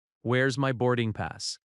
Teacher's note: Again, where is becomes where's.